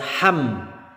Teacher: tidak boleh berdengung tidak boleh dipanjangkan ditahan-tahan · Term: izhar syafawi